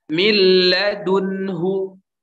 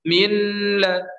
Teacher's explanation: Nah, terjadi apabila nun sukun atau tanwin bertemu dengan salah satu huruf lam dan ra. Dibaca idgham, dimasukkan tanpa gunnah, tanpa dengung. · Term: idgham bila gunnah